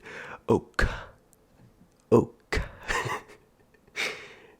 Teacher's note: a really breathy k sound